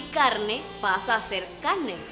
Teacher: También es común la aspiración de la R anteconsonante nasal o líquida.